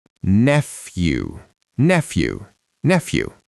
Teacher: the PH makes an F sound and the EW at the end sounds like you.